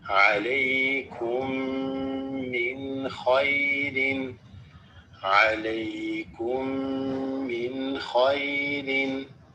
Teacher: This meme with this meme is idgham, it assimilates.